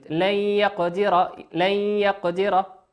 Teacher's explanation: وقوله لن يقدر، نون ساكنة لن يقدر في نفس الآية، نون ساكن أتى بعدها حرف الياء، والياء من حروف الإدغام بغنة، يغن بمقدار حركتين، يغن بمقدار حركتين، فتقرأ لن، كأن النون لا توجد